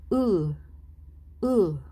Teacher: para makuha natin ang sound na ito, pagdikitin natin ang ating ngipin. Tapos sabay sabi ng U, pero hindi bilog ang ating bibig.